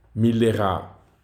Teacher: en mettant l'accent tonique à la fin du mot